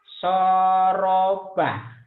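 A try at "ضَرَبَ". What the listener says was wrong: Enak aja. Ayat titikan itu teh. Doroba. Cuman ini. Ya, doroba. Nggak banyak salah.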